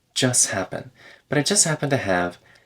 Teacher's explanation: the T in just gets deleted because it's in front of a consonant